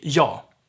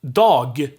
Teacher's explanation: we drop the g ending